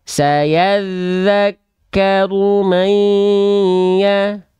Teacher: Kadarnya kadar gunnah. Tahan dengan 2 harokat kadar gunnah